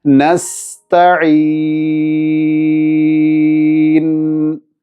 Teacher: അവസാനം നൂനിൽ വഖഫ് ചെയ്യുമ്പോൾ നൂൻ അല്പം കേൾക്കുന്ന രൂപത്തിൽ സമയമെടുത്ത് ഉച്ചരിക്കണം.